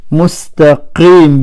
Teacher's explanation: Si, sad full mouth, ra full mouth, ta full mouth